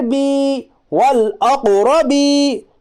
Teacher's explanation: یا ساکن سے پہلے زیر ہے، اس لیے یا مدہ ہوگا، یا مدہ کو ایک الف کے برابر کھینچ کر پڑھیے